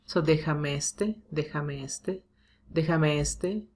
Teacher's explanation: Déjame este. So here we do have to prolong the sound because este has the stress here.